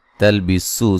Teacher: सीन को बारीक सीटी से अदा करेंगे